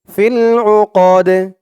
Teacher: জবর দিয়ে দাল ধরলে যেমন উচ্চারণ হয় এখানে তেমন উচ্চারণ হবে দালটা কলকলার হরফ হয়ে যাবে ধাক্কা দিয়ে পড়তে